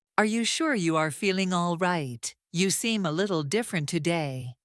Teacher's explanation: Hear the softness, the gentle rising pitch.